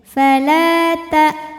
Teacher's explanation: Ada hamzah, salah satu sifatnya dari segi suara, suaranya tidak mengalir, tertahan. Ketika ditekan tertahan. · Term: Syiddah